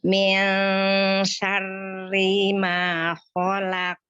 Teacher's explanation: Jangan ragu langsung kan nun sukunnya itu ikhfa ya. Ketika pengucapan nunnya itu sudah membentuk makhraj huruf sin, jadi udah nggak jauh-jauh lagi. Maka dia nggak perlu pakai bantuan bibir karena mengalir sudah ketika pengucapan nun sukunnya itu sudah ngalir ke shin.